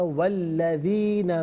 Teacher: वा अल्लज़ीना मिन क़ब्लिहिम, मिलाकर पढ़ने की सूरत में वाव पर जो ज़बर है इसे अल्लज़ीना के लाम के साथ मिलाएंगे, दरमियान से हमज़ा यानी अलिफ को हज़फ किया जाएगा। वल्लज़ीना मिन क़ब्लिहिम कज़्ज़बू बी आयाति रब्बिहिम।